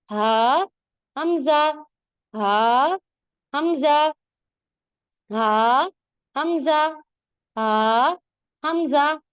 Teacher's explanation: हलक का जो सबसे नीचे वाला हिस्सा है सीने की तरफ वहां से दो हुरूफ अदा होते हैं हा और हमजा बारीक और बगैर रगड़ खाती आवाज में आवाज थोड़ी भारी होती